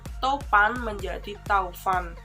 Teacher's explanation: perubahan bunyi vokal tunggal atau monoftong menjadi dua bunyi vokal atau vokal rangkap atau diftong secara berurutan. Perubahan dari vokal tunggal ke vokal rangkap ini masih diucapkan dalam satu puncak kenyaringan, sehingga tetap dalam satu silaba. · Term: diftongisasi